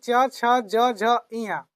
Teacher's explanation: जीभ के ऊपर का भाग तालु होता है। वहीं से इसका उच्चारण होता है। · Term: च वर्ग